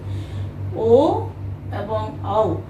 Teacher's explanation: এই দুটির উচ্চারণের জন্য আমাদেরকে ওষ্ঠ এবং কণ্ঠের সাহায্য নিতে হয় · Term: কণ্ঠস্থ বর্ণ